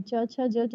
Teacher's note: तालव्य जिनके उच्चारण में हमारी जीभ तालु को छूती है।